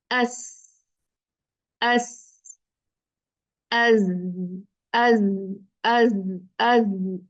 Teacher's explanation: जुबान नीचे रहेगी ऊपर नहीं उठेगी ठीक है तालू की तरफ बुलंद नहीं होगी